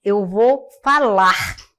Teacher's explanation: A queda do R, final dos verbos, muito comum na língua oral no português.